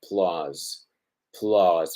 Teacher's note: un sonido bien breve, seguido por un sonido prolongado